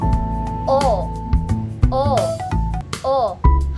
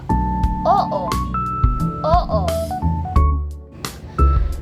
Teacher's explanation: Sa letrang O, ang bibig ay medyo bilugan at bukas. Samantalang ang dila ay nasa likurang gitnang bahagi